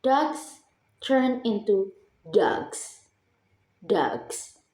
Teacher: The S sound becomes Z because of the voiced word G. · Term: progressive assimilation